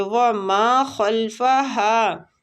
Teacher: ماں کو کھینچیں گے الف مد کی وجہ سے